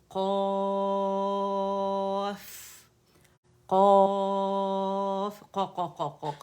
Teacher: زبان جو ہے وہ, زبان کی جڑ جو ہے, روٹ آف دا ٹنگ, نرم تالو سے لگے گی, اٹھے گی اور نرم تالو سے لگے گی